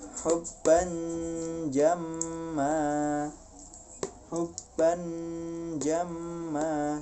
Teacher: Jadi bannya itu ketika menyatakan tanwinnya itu langsung lidahnya bersiap untuk mengucapkan makhraj huruf jim. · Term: ikhfa